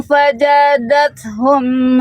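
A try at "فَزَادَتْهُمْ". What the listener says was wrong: Fazadat hum jangan faja Bunda. Zai. Faza. Zai. Za. Z Bunda huruf huruf Z. Faza.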